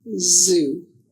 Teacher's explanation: To make the sound of the letter Z, air is blocked by the tongue near the ridge behind the teeth. The sound is made by air passing with relatively high pressure through a narrow groove of the tongue.